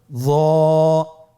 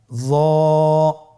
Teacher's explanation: একটু মোটা করে বলতে হবে। হরফটি হলো মোটা হরফ, বারিক করে পড়া যাবে না এবং হরফটি উচ্চারণ করার সময় অবশ্যই 1 আলিফ টেনে পড়তে হবে। · জিহ্বার আগা সামনের উপরের 2 দাঁতের আগার সঙ্গে লাগিয়ে উচ্চারিত।